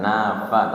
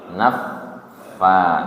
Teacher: Tidak nafa tapi naffa. Tasdid dulu baru dipanjangkan